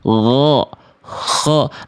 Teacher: makhrajnya sama dari ujung tenggorokan. Tenggorokan bagian terluar ya.